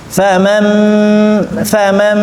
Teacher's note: membaca iqlab itu harus diitbakan dirapatkan dua bibir · Merubah nun menjadi huruf m mim. Ya, merubah nun menjadi huruf mim.